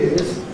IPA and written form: ɪt ˋ͵ɪz (It is)